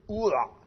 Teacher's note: Et je dois faire un petit A avant de faire le haïn. Ce petit patar, d'ailleurs, on l'appelle un patar furtif.